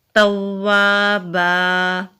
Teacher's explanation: توابا، تا کو واو سے ملائیں گے، واو کے اوپر تشدید ہے، تشدید والا حرف مضبوطی سے ادا ہوگا، آگے خالی الف ہے، الف مدہ ہے، ایک الف کے برابر لمبا کریں گے۔ با کے اوپر تنوین ہے، آگے وقف کی علامت ہے، رکیں گے تو با کے اوپر ایک زبر ادا ہوگا، تو یہاں پر الف مدہ بھی ہے تو پڑھا جائے گا توابا۔